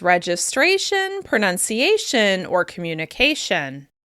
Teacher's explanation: For example, consider words that end in tion, such as registration, pronunciation, or communication. These words share a common ending, and they're consistently stressed on the same syllable, the second to last one.